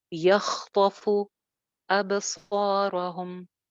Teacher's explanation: फ की पेश होंठ गोल